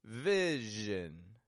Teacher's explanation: notice the stress is in the first syllable